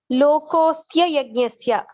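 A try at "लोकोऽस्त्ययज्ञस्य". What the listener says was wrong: There is no ya again. Say E and ya. E and ya will combine, becomes ya. So, lokosti yajnasya. There is no another ya there. It is not the word yajnasya. The word is ayajnasya. Ayajnasya, my bad. Ayajnasya. Na loko asti ayajnasya kuto anya.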